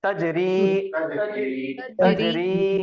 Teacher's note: اب تا کے اوپر حرکت ہے تو جلدی پڑھنا ہے, متحرک زبر, اور را کے نیچے زیر ہے, اس کے بعد یا ساکن ہے تو یا مدہ ہو جائے گا